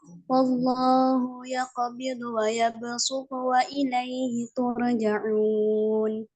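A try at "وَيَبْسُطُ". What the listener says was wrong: Ya besu, su tipisin. Ya besu tu, su tu, ya su tipisin. su tu.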